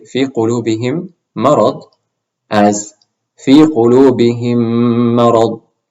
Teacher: then just merge the meme sounds and make a ghunna sound